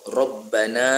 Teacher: Kahfi faqalu, dua-dua man asli. Rabbana, ra dibaca tafkhim, dibaca tebal kerana ra tu baris atas